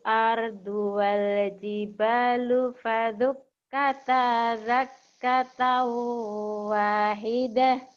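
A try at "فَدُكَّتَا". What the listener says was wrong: Ini da-nya ada titiknya apa enggak ya? Tadi bacanya faduk kata za, agak mungkin pengaruh dari sini nih. Keras, ayo ulang lagi. Faduk kata. Wa humilatil ardu wal jibalu fadukkata dakkata wahidah.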